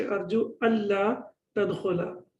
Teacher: the Noon gets dropped and the la gets tashdid, and this is the rules of the tajweed as well. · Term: idgham without ghunna